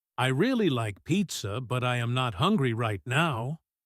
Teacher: I am slowing down on right now. I am dragging it out a bit. That is a signal.